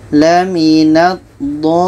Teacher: Maka cara bacanya, dha ini tetap kita panjangkan 6 harkat baru masuk ke lam. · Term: mat lazim kilmi mutsaqqal